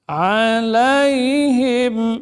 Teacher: Alaihim, mim sukun dan nun apa? Izhar syafawi, bibirnya rapat dan ditekan.